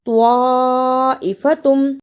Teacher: توا کی جگہ پہ تا کی آواز نہیں آنی چاہیے